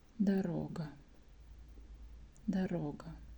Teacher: sometimes O is pronounced like A, so O becomes A.